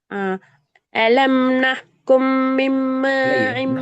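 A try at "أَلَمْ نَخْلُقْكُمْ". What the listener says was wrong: பிழை. நஹ்கும். நஹ்கும்னு போகல, அடிச்சு புடிச்சிட்டு ஓடுறீங்க. நஹ்கும் இல்ல. நஹ்லுக்கும் இல்ல. சத்த உச்சரிக்கணும், சத்த உச்சரிக்கணும். சத்து உச்சரிக்கப்படுதா? நஹ்லுக்கும் சத்து உச்சரிக்கப்படுதா?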